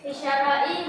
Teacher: lam tidak dibaca karena bertemu sin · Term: alif lam syamsiyah